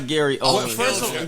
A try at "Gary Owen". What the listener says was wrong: I want to say it's Owen, not Owens. There's no S. No S. No S.